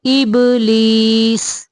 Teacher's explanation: इब बा को कुलकुला करेंगे